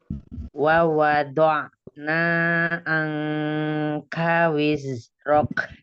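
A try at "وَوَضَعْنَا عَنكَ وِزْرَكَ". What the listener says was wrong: Angka, K-nya nggak boleh. K nggak boleh kebanyakan hams. Dia juga punya sifat syiddah. Angka. Cukup seperti aja.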